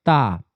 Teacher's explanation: जीभ दांत पर टच हुई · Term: दंत व्यंजन